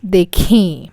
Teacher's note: in dekhi, I am putting a nasal sound to indicate that paintings are plural